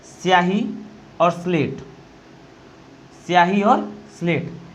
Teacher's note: स्याही और स्लेट, इनमें हमें ई का आभास नहीं हो रहा है